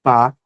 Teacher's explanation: no som p nós sentimos os lábios fechados, né, bloqueando o ar. Então, nós temos uma consoante, ó, fechou, obstruiu uma consoante.